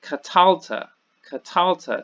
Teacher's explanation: the accent is actually in this center syllable